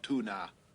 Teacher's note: certainly the emphasis is correct on that first syllable, but it's not Tuna like we pronounce the fish, it's Tuna.